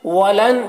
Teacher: نون میں اخفا ہوگا، یعنی نون کی آواز کو ناک میں چھپا کر پڑھیں گے۔